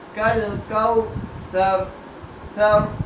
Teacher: یہاں پر سین نہیں ادا کرنا، یہاں پر سا ادا کرنا، نرمی سے پڑھنے والا حرف ہے